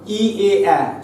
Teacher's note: সম্মুখ স্বর ই এ আ, যখন জিহ্বা কোথায় যাচ্ছে না জিহ্বা যখন সামনের দিকে এগিয়ে আসছে, তাই এই তিনটেকে আমরা বলছি সম্মুখ স্বর